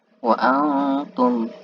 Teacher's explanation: ikhfa karena ada nun mati bertemu ta